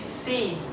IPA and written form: siː (see)